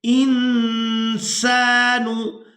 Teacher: तो यहाँ पर जो सीन है ये हरूफ इख्फा में से है तो नून साकिन पर इख्फा करेंगे। इंसानु, नून साकिन की आवाज़ को नाक में छुपा कर अदा करेंगे।